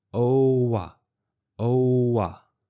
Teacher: We need to transition from O with rounded lips to ah with my mouth wide open. So I keep my voice going the whole time, oh-wah, oh-wah.